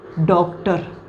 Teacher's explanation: हिंदी में यूज करते हैं जैसे डॉक्टर तो यह जो है औ की आवाज आ और ओ की मिक्स आवाज होती है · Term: आगत ध्वनि